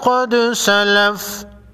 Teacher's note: دال ساکن کو ہلا کر پڑھیں گے، قاف حروف مستعلیہ میں سے ہے، موٹا پڑھیں گے۔